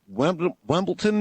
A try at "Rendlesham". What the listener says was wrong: Rendlesham. The Rendlesham with an R.